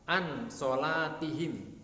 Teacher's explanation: nun sukun atau tanwin dibaca dengan samar-samar disertai dengan suara mendengung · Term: ikhfak